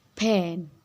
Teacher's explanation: Dalam kata pen, fonem huruf P dibaca menggunakan sedikit tekanan seperti pen. Jadi ada hembusan udara yang keluar dari mulut kita.